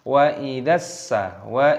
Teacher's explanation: Mad wajib mutasil dipanjangkan 6 ketukan.